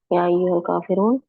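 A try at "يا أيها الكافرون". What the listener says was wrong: काफिरून, नून के ऊपर जबर, काफिरूना, या काफिरूना जमा है ना, बहुत सारे काफिर है ना, एक नहीं है।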